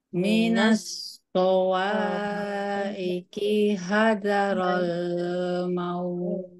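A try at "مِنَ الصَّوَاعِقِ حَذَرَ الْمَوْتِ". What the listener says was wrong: Ya, lamnya jangan terlalu lama, jangan roll gitu ya. Langsung saja roll maut. Minas sawa'iqi hadaral maut.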